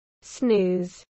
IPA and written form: snuːz (snooze)